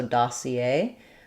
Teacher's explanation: in English, we have the last syllable stress